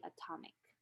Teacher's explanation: the stress changed from the first syllable to the second syllable in the word and so the ash is reduced to a schwa